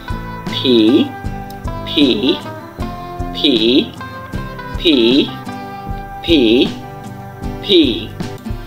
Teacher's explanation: দুই ঠোঁটকে একসাথে করে ভি বলে আপনি হচ্ছে যে মুখ থেকে বাতাস বের করবেন